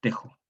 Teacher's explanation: Esta yo palataliza, inflexiona la A, la cierra en E, Teisu, pero la yo también palataliza la S y la transforma en la J antigua, una fricativa palatal sorda, Teishu. Y en el siglo XVII, esta J antigua evoluciona a la J moderna, la velar sorda